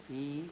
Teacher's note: Do you see my tongue rising? E, and going front.